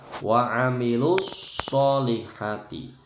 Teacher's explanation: Wa amilus solihati, shotnya dibaca mencucu.